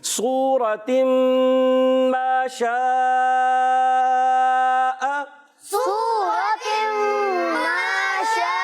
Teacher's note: تو پیارے بچوں اس کو ہم کھینچ کر پڑھیں گے، 2 ڈھائی الف کھینچ کر رکھ پڑھیں گے اور حمزہ کو خوب واضح کریں گے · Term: مد متصل